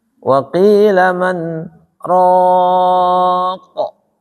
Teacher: Ya, jadi harus panjang mad al sukun.